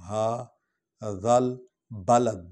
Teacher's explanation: وَهَٰذَا، ہا حرف تنبیہ ہے، اس کو لمبا کریں گے، اس پر الف کھڑا ہے۔ ہا ذل، ذا کو جو ہے وہ نرم انداز میں پڑھنا ہے، ذے نہ بن جائے